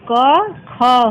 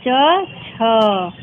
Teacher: जिन वर्णों का उच्चारण करते समय हमारी स्वर तंत्रियों में गूंज या कंपन उत्पन्न नहीं होता है उसे अघोष वर्ण कहते हैं